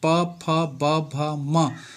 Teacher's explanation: उनका उच्चारण करते समय हमारे दोनों ओठ चिपक हैं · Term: ओष्ठ व्य